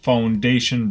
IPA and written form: faʊnˈdeɪʃn (foundation)